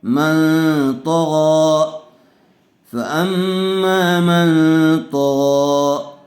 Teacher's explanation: بعد الف مدہ آیا ہوا ہے۔ من، میم نون زبر من، نون ساکن کے بعد حروف اخفا میں سے تو آیا ہوا ہے، اس لیے غنّے کے ساتھ اخفا کر کے پڑھیں گے۔ من، تو زبر تو، غین کھڑا زبر غا، من طغا، فاما